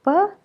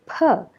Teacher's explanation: both of them are bilabial voiceless plosive sounds